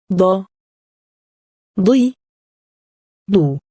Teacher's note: The letter Daad isn't equivalent to any of the English letters. However, Daad sounds like the letter D, but much thicker, and deeper sounding. Saad and Daad look very similar except that, Saad has no dots, and Daad has one dot on top.